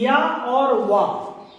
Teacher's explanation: या वा को बोलने में स्वर से थोड़ा अधिक किंतु अन्य व्यंजनों से थोड़ा कम समय लगता है, उसे हम अर्ध स्वर कहते हैं।